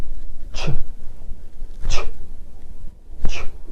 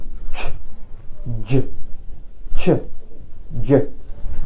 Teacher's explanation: يبقى اللي حصل وهو اول حاجه حصلت حركه وقفيه، وبعد كده حركه انسياب للهواء، زي ما بقول ج ج ج. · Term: الافريكاتيفز